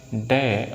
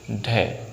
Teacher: लेकिन जो डे होता है ये अल्प प्राण होता है। क्या होता है? अल्प प्राण। और जो ढय होता है यह महाप्राण होता है।